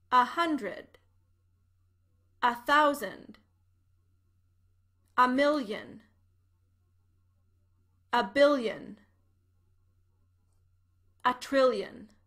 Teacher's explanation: the letter a is pronounced as an unstressed a sound